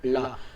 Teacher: इसमें भी थोड़ा सा जीभ मुड़ता है, लेकिन जीभ जहां से राउंड होता है उसके अगल बगल से हवा निकल जाता है। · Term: पार्श्विक